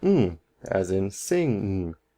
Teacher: this is near the back of your throat and the air is going to go through your nose again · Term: velar sound